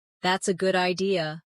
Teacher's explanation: Notice how their voice rises at the end.